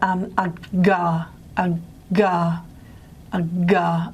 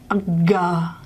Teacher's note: Okay, and I don't know if it's really obvious on me, but a ga, the larynx is moving downwards